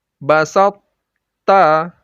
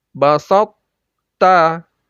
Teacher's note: Nah, pada idgham ini kita tidak baca basatta, ya, tidak masuk seutuhnya kepada ta, tetapi to-nya, to yang sukun itu masih kita baca ada sifat tonya, sifat itbaq atau tebalnya. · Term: idgham naqis